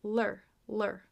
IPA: lɚ